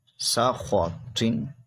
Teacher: زبر خو سا خو، تو دو زیر طن سا خو طن، خو اور تو کو موٹا پڑھیں گے کیونکہ حروف مستعلیہ ہے